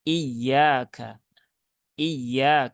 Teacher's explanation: Penaikan intonasi sedikit untuk memberikan tekanan. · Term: naber